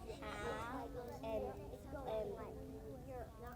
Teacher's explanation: your mouth is open when you start, but when you finish, it's in a circle. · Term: diphthongs